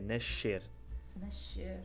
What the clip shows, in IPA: nɐʃˈseɾ